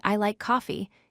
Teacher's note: Your voice starts at a higher pitch and falls at the end. For example, when you say, "I like coffee," your voice drops on the word coffee. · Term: falling intonation